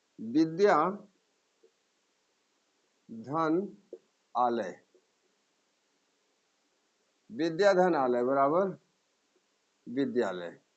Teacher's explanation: विद्याधन आलय विद्या में आ और यहाँ आ दोनों मिलकर के आ हो जाएगा। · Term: दीर्घ स्वर संधि